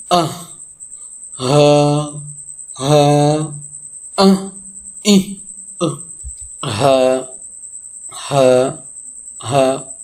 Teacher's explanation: And this Ha letter pronounced from the bottom part of the throat